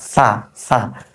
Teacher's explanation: সা উচ্চারণ যখন করছি আমি জিহ্বার আগা সামনের দাঁতের এই যে সামনের দাঁত আছে না দাঁতের আগার অংশটাতে লাগিয়ে দিচ্ছি